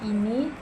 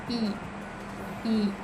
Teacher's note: dilafalkan dengan lidah tinggi di depan dan bibir tidak bulat.